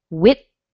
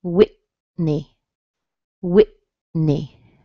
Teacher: My tongue did not move between the T and the N. I changed my air actually from my mouth to my nose because when you make an N sound, the sound is in your nose, but the position doesn't change.